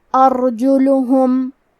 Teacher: یہاں حرف الرا کا حکم ہے تفخیم تو ہم را کو موٹی آواز میں پڑھیں گے